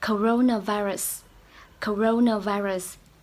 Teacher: Thì từ này có 5 âm tiết, coronavirus, 5 âm tiết. Những âm sau mình sẽ đọc âm yếu thôi, ơ thôi ạ.